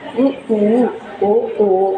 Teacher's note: இ, ஈ, ஏ, ஏ, ஐ இது எல்லாமே வாயை விரிக்கிறதுனால, இதழை விரிப்பதனால் இந்த வகை சொற்கள் உருவாகின்றன. உ, ஊ, ஓ, ஓ இது வாயை குவித்தலால், இதழை குவித்தலால் இந்த சொற்கள் பிறக்கின்றன